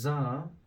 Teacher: the first part of your tongue it has to stay in the middle of upper and lower incisors